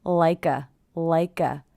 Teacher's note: I hear the K linking to the schwa Leica like a native speaker native I hear this t as